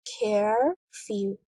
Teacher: In the word curfew, there are two syllables, care-few. The stress is on the first syllable, care. The second syllable is unstressed.